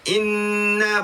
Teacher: Ok seterusnya dibaca na dibaca di atas na ni ada sabdu hukum dia wajibul ghunah wajib dengung dua harakat